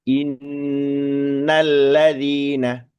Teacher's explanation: Nun tasdidnya pasti dipastikan lebih lama daripada lam tasdid yang ee betul-betul di setelah nun tasdid tadi gitu ya.